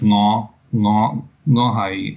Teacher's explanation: a low rising tone in Cantonese